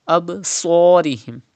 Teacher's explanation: And sad is also pronounced with whistle sound. Do not pronounce sad without whistle like absarihim, but with whistle.